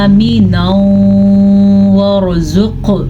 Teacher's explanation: را کو پر پڑھیں گے کیونکہ را ساکن ہے اور ساکن را سے پہلے اگر زبر یا پیش ہو تو را پر یعنی کہ موٹی پڑھی جاتی ہے، اور اگر ساکن را سے پہلے زیر ہو تو را باریک پڑھی جاتی ہے.